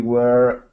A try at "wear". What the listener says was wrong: Well, your pronunciation of the word is not quite correct. So let me look at this. This word "wear" should sound like this, but it should sound like chair, wear, or W-H-E-R-E, wear. But yours sounds like were, like a bird, were.